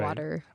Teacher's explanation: Americans pronounce water as like with the D